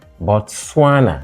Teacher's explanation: Botswana is stressed on the second syllable